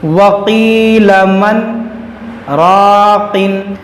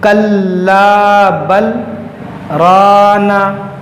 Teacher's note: आवाज़ रोका मगर सांस नहीं तोड़ा, तो आपको भी सक्ता पे आवाज़ रोकना है, सांस नहीं तोड़ना है।